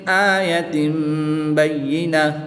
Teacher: تنوین کو میم سے بدل کر غنہ زمانی کر کے پڑھیں گے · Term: اقلاب